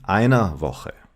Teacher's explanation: you hardly pronounce the R at the end of the word